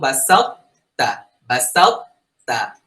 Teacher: তটায় কোনো ধরনের কলকলা হবে না, যদিও তয়ের উপরে সুকুন আছে · তটাকে মোটা করব, তাটাকে পাতলা